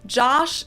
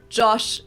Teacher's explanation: it sounds the exact same for someone who's not paying attention, but the O is shorter in German.